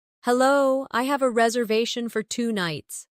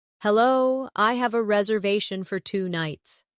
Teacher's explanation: Notice the stress on reservation. It helps make your meaning clear.